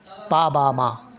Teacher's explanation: যেগুলো উচ্চবর্ণ, অর্থাৎ উপরের ঠোঁট নিচের ঠোঁটকে টাচ করে উচ্চারিত হয় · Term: বাইলাবিয়াল কনসোনেন্ট সাউন্ড